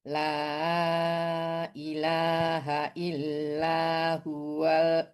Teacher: mad jaiz munfasil panjangnya empat atau lima harakat